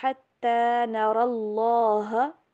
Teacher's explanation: را کو موٹا کر کے پڑھیں گے اور لام کو بھی